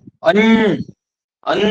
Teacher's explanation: अन्न म्हटल्याबरोबर नाकातून व्हायब्रेशन होतो